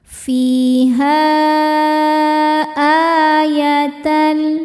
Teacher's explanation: maka cara bacanya ha dipanjangkan boleh empat boleh lima harakat · Sedangkan hamzahnya adalah alif dengan harokat fathah, ini masuk ke kata berikutnya yaitu ayatan. Maka cara bacanya ha dipanjangkan, boleh 4 boleh 5 harokat. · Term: mad jaiz munfasil